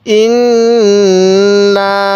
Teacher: আমি নুনের মধ্যে গুন্না করছি আপনিও নাকের বাঁশি দ্বারা গুনাহ করবেন